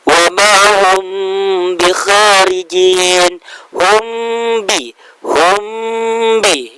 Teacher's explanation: Ada yang disebut dengan ikhfa syafawi, yaitu apabila ada mim sukun ketemu dengan huruf ba. Cara bacanya adalah huruf mimnya disamarkan dan didengungkan